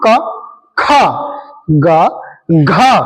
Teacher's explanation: दूसरा और चौथे पे हम क्या करते हैं इन पे अधिक प्राण लगाते हैं इसलिए इनको महाप्राण वर्ण बोला जाता है